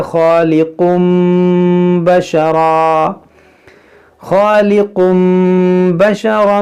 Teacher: اس تنوین کے اندر جو نون ساکن ہے اسے ہم اس میم سے بدل کر پڑھیں گے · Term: اقلاب